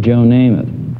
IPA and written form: ˈneɪməθ (Namath)